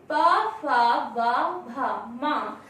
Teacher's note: ओष्ठ से, क्योंकि जब हम प, फ, ब, भ, म शब्द का उच्चारण करते हैं तो हमारे ओठ आपस में मिलते हैं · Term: पा वर्ग